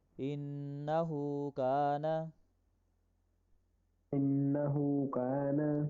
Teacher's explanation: جی انہو کان, انہو کان, ان یہاں پہ غنہ کریں گے, ہو الٹا پیش ہے لمبا کر کے پڑھیں گے, کانا الف مدہ ہے اس لیے ہم نے کا کو لمبا کیا.